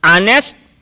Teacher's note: Although the word honest begins with the letter H, it's pronounced as if it starts with a vowel